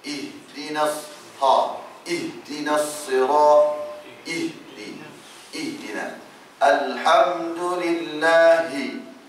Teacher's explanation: Makhraj ha ni paling bawah ni. Dekat dada. Di tengkok, dekat berhampir dengan dada.